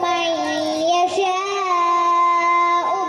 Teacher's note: نون ساکن کے بعد ادغام باغنہ کے 4 حروف میں سے یا آیا ہے تو نون ساکن کا ادغام باغنہ ہوگا۔ ادغام باغنہ یعنی کہ نون ساکن کی آواز کو یا سے ملا کر گنہ کے ساتھ پڑھے